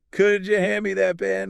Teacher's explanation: Could you? Merges into that softer kuja sound.